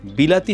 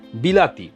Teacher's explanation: বি আর তি যা আছে তাই কিন্তু লা টা হয়ে গেল লি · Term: মধ্যগত স্বর সংগতি